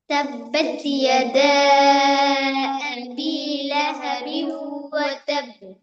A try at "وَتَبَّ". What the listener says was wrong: ওয়াতাব বলা যাবে না, কারণ বার উপর একটা তাসদিদ আছে, ধরে রাখতে হবে। ওয়াতাব, ওয়াতাব।